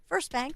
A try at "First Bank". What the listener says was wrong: I swear it sounds like you're saying spank when you say it. First Bank. Like he has that pause. I think we need that pause in First Bank.